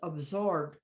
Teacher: I don't go absorbed, it's absorbed. I still keep the way the word is, but I don't raise the pitch.